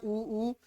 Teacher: आप देख रहे हैं कि ऊ को हम कहाँ से बोल रहे हैं, ओष्ठ से। · ऊ को कहाँ से बोलते हैं, ओष्ठ। आप खुद देख रहे हैं ऊ, यानी इसको कहाँ से बोलते हैं, ओष्ठ से।